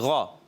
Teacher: غین حلق کے اوپر والے حصے سے حروف مستعلیہ میں سے موٹا پڑھیں گے